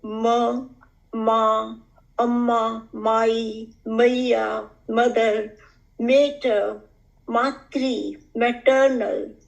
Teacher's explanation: As a bilabial syllable, babies have to just join their two lips and the sound ma comes easily to them.